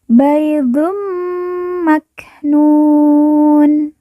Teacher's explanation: kaannahunna baidum maknun kemudian Dun bertemu dengan mim yang bertasjid maka Dun dileburkan langsung masuk huruf mim lalu ditekan ditahan dua harakat dan didengungkan